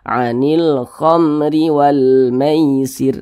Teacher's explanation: pendek saja dia tidak digunahkan tidak didengungkan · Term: izhar syafawi